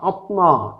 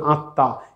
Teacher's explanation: যেমন আমরা আত্মার ভিতরে যদি দেখি আত্মা, আমরা যদি সংস্কৃত উচ্চারণ করি তাহলে এখানে আত্মা হয়, আত্মা, কিন্তু আমরা স্বাভাবিকভাবে উচ্চারণ করি আত্মা, এই মটা উচ্চারিত হচ্ছে না